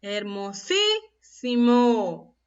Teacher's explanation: Está la mayor fuerza de voz en la antepenúltima sílaba, por ello es una palabra esdrújula.